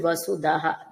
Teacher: అంతటా కూడా ఇది ఇది మహేంద్ర అన్న నామం తర్వాత వసుదః నామాన్ని చూడండి వసుదః ధ కి మహాప్రాణం ఉండదు మామూలుదా వసుధ వేరు వసుధ వేరు వేరే అర్థాలు వస్తాయి. కాబట్టి ఇక్కడ అంటే సంపదలు